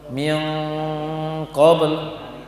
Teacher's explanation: nun sukun bertemu dengan qaf akan bertambah sifat dengungnya, lama kadar dengung akan bertambah karena dengung adalah bawaan dari nun, akan bertambah dia kalau bertemu dengan qaf.